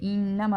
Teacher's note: انما نون مشدد ہے، غنہ کریں گے